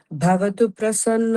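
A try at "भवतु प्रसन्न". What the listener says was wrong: ಭವತು ಪ್ರಸನ್ನ, ಭವತು ಪ್ರಸನ್ನ ತೂ ಪ್ರ ಮಧ್ಯದಲ್ಲಿ ಒಂದು ಪಾಸ್ ಇದೆ, ಗಮನಿಸಿ.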